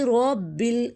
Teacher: را کو ہم موٹا کریں گے، بل با مشدد جو ہے اس کو ہم سختی سے پڑھیں گے، آگے لام ساکن ہے اس پر ہم کلکلہ نہیں ہونے دیں گے۔